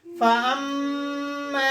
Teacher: mim mushaddad is gunna, nasal passage.